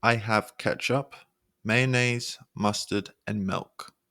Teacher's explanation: each item steps up slightly in Pitch inflection sorry except for the last one which Falls it's powerful